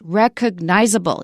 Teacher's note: the word recognizable is interesting because it has two stresses. Not just recognizable or recognizable, it's recognizable.